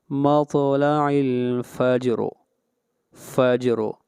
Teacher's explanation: یہاں پر جیم کے اوپر بھی قلقلہ ہوگا اور را کو موٹا پڑا جائے گا، سلام ہی حتی مطلع الفجر، سلام ہی حتی مطلع الفجر، سلام ہی حتی مطلع الفجر۔